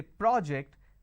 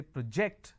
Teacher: when I'm stressing on the first syllable it becomes a noun